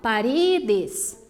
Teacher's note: penúltima sílaba mais forte, não é a última mais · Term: palavras llanas